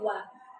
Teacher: Wau itu huruf bibir. Huruf bibir yang dua bibir